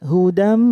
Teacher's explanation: idghom bighunnah itu mendengung 3 ketukan hudam 3 ketukan didengung mirrobbihim nun sukun bertemu ro namanya idghom